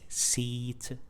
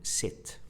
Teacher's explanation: the long vowel sound E, and the other was the short vowel sound I